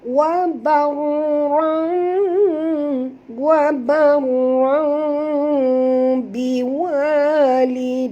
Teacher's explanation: Apabila ra ataupun tanwin ini bertemu dengan ba, maka kita kena tukarkan bunyi tanwin itu baris dua di atas ini kepada bunyi mim. Ya, kepada bunyi mim dan dengung. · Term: iqlab